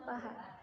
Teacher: Konsonan frikatif glotal tak bersuara, yaitu H. Dibentuk dengan melewatkan arus udara di antara pita suara yang menyempit, sehingga menimbulkan bunyi desis tanpa dihambat di tempat lain